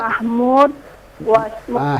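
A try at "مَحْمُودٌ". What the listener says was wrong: Hidupkan dalnya. Hidupkan dalnya. Mahmu. Mahmudun atau Mahmudin atau Mahmudan. Hidupkan semuanya.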